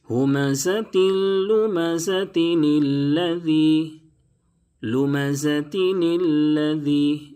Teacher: ہمزة لمزہ کو الذی سے جب ملانا ہو تو یہ چھوٹا سا نون جو آپ دیکھ رہے ہیں اس کو پڑھیں گے، ملانے کی صورت میں نون پڑھا جائے گا۔